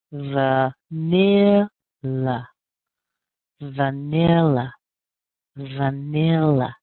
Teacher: I'm putting more strength on that ni sound because that's where our strongest syllable is and then we're going to end up with another weak syllable